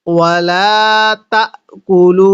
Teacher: এই লামের মধ্যে আমরা তিন আলিফ টান দিব।